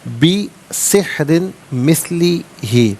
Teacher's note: را کے نیچے دو زیر کی تنوین ہے، باریک کر کے پڑھا جائے گا، اور دو زیر کی تنوین کو مثلی کی میم کے ساتھ ملا کر میم کی آواز کو غننے کے ساتھ ادا کریں گے۔